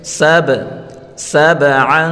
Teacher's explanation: با حروف قلقلہ ہے، با کو اپنی مخرج سے تھوڑا ہلا کر پڑھیں گے۔